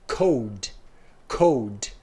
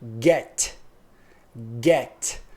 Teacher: o k e o g são produzidos na parte velar o k é voiceless e o g G é voiced OK